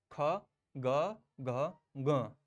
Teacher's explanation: ये कंठ से ही इसकी आवाज आनी चाहिए।